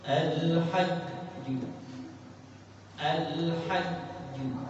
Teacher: Tertahan kuat pada huruf jimnya. Jadi ketika bertasydid al-hajju, al-hajju, bertahan kuat daripada suaranya.